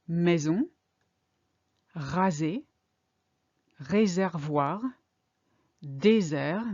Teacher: the S becomes a soft z sound · between two vowels the vowels kind of weaken the S